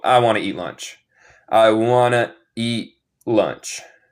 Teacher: So, esto no es una palabra, pero es una manera que hablamos cuando hablamos rápido. Want to convierte en wanna.